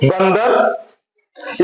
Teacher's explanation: यहां इस अनुस्वार का उच्चारण आधे न के रूप में किया जाएगा